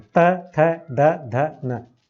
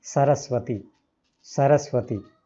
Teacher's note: त, थ, द, ध, न, सब दांतों से बोले जाते हैं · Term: दंत्य